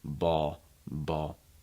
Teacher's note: for native speakers you're often going to hear that it'll become like a dark l sound